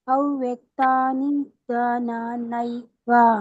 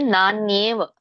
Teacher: ಅದೇ ನೈ ಇಲ್ಲ ಮಾತಾಜಿ, ನಾನ್ಯೇವ, ನೇ ಏ ಬರ್ಬೇಕು, ನೇವ್, ನೈವ ಅಲ್ಲ, ನೇವ್